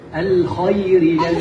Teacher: حرف الخاء يجب أن يكون مفخم.